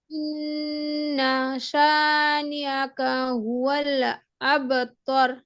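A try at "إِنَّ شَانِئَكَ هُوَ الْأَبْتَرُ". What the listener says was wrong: আব, তার হবে, তর হবে না কিন্তু তখন। আর এই যে ইন, এই যে আইনের উচ্চারণটা মনে হচ্ছে যেন আতে টান দিচ্ছেন, এরকম বোঝা হচ্ছে। টান না, মূলত হামজা আইন যাবার আও, আও।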